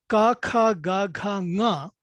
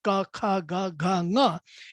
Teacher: They are all velar, back of the mouth. If you feel your tongue, back of your tongue, while you say ka, kha, ga, gha, nga, you will see that the tongue doesn't move from that velar back position.